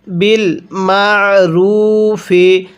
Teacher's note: আইনটা পড়ার সময় আমি গলার মধ্যে চাপ দিয়ে পড়ছি, যার কারণে আইনটা সহি শুদ্ধ উচ্চারণ হয়েছে।